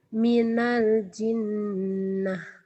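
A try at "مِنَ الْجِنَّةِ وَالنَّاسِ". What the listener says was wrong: iya, ini ada ti-nya ya. Minal jinnati wan nas. Coba baca, gabungin. Wan nas.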